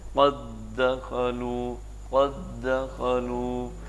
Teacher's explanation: पहले भी दाल है और बाद में भी दाल है, तो इन दोनों को आपस में मर्ज कर दिया जाता है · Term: इदगाम